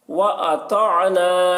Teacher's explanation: طا کو پر پڑھیں گے، طا حروف مستعلیہ میں سے ہے۔